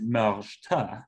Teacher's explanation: So the plural has a weak vowel, and because of that, we get stress on the second syllable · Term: second syllable stress